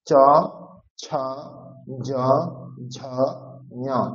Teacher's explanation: চ ছ জ ঝ পর্যন্ত উচ্চারণ হবে তালুতে। তালু, তালু মানে হচ্ছে আমাদের যে ওপরের দাঁত আছে, ওপরের যে দাঁতের সারি, দাঁতের সারির পরেই যে শক্ত অংশ মাড়ি, মাড়ি বলি আমরা তাই না, মাড়ি, দাঁতের মাড়ি, তো সেই মাড়ির থেকে আর একটু পরের অংশ, সেটাকে আমরা বলবো তালু। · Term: তালব্য বর্ণ